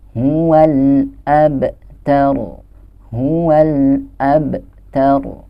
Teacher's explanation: Nah, di sini kita bertemu dengan salah satu huruf qalqalah, yaitu ba. Nah, ba yang sukun ini kita harus bacanya dengan memantul karena dia adalah qalqalah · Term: qalqalah sugro